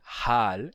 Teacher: não é com som de ra e sim com ha e tem um a longo nesse caso